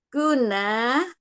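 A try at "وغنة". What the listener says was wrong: Ada waw. Wawun. Ada waw di depan. Wawunna.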